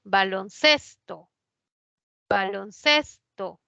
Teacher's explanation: cuando forma la nueva palabra la mayor fuerza de voz ya no está en balón está en ces